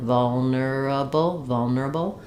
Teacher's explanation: we have the schwa, first syllable stress.